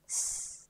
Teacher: Feel s in your breath release from your center, hissing the word from between the front of your tongue and the upper gum ridge